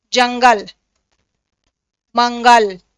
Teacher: अंसुवर जो होला इकर उच्चारण नाक से होएला